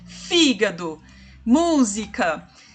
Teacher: a antepenúltima sílaba é a mais forte a tônica a mais longa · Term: proparoxítona